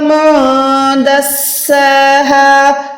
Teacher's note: نون ساکن کے بعد دال جو ہے حروف اکفا میں آ گیا, تو یہاں پر ہم نے نون کو چھپا کے پڑھنا ہے